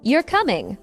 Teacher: with a rising tone, it sounds like a question